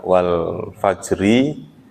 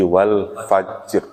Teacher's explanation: itu huruf terakhir tetap dimunculkan, tetap terbaca tapi sukun kayak wal fajri menjadi wal fajr jimnya.